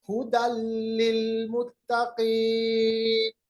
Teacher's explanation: दो जबर को बिल्कुल लाम के साथ हमने मिलाया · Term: इदगाम